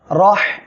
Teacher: রহমানু এখানে র অক্ষরের উপরে জবর আসছে মোটা করে পড়বেন আর হা গলাটা চেপে বাতাস বের করে উচ্চারণ করবেন কেননা এটা হামসের অক্ষর